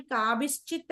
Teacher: కాబిహి plus చిత్ విసర్గ శకారంగా మారి కాబిశ్చిత్ అయింది